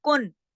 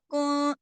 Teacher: कुंतुम यानी इजहार नहीं किया, इजहार होता तो मैं सीधा कहती कुन, अब मैंने कहा कुन, आवाज थोड़ी सी नाक में चली गई, छोटा सा गुन्ना भी हुआ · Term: इख्फा